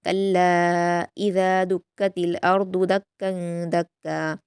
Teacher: लाम पर अलिफ मद्दा है और उसके बाद हमज़ा दूसरे कलीमे में है, मद्दे मुनफसिल होगा, 4 हरकत खींचेंगे